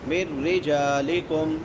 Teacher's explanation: من رجالکم، نون ساکن کے بعد حروف یرملون میں سے را ہے، تو یہاں پہ ادغام بلا غنہ ہوگا، بغیر غنے کی۔ من رجالکم، را کے نیچے زیر ہے، را باریک ہوگی، جیم کے بعد الف مدہ ہے، ایک الف کے برابر لمبا کریں گے۔